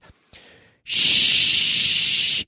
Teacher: but they're almost touching and I'm moving a lot of air I'm blowing a lot of air out through my teeth